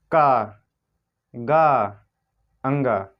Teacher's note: इनके उच्चारण में कम वायु छोड़ रहे हैं। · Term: अल्प प्राण ध्वनियाँ